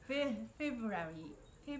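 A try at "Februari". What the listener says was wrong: ー、 い や そ れ は 英 語 の 発 音 、 フ ェ ブ ア リ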